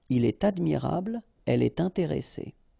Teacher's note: So like here, for instance, il est admirable, il est admirable, okay, elle est intéressée, all right, so in all these cases you should make the liaison, and in that case it's with T.